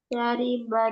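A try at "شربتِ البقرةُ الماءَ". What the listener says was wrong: Yang pertama harus dikatakan itu ada harokatnya loh, paling depan. Syaribat. Ketika ketemu sukun bertemu alif lam maka dibacanya kasroh. Syaribatil.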